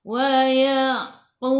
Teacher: Yang ni tak ada baris sabdu, jadi kubra. Qalqalah kubra, lantunannya besar.